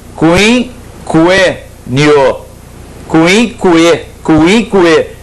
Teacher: O U é fracamente pronunciado. Depois dele vem o I.